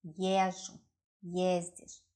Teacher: The stress is always on the first syllable.